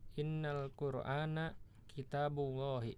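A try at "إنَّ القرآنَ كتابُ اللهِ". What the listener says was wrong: Iya, bagus ya.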